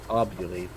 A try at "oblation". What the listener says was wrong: Oblation. That's totally different. There's no U in there.